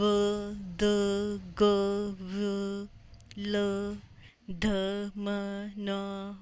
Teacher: ये voiced sound है। आप इनको बोल के देखो, इसमें वाइब्रेशन प्रोड्यूस होगी